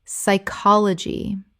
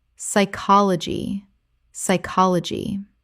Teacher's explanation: The P is completely silent and the Y makes a short I sound.